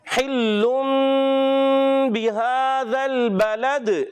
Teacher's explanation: کھڑی حرکات کھینچیں گے اور اس کے بعد دال میں کلکلا کریں گے، لام کو ہلائیں گے نہیں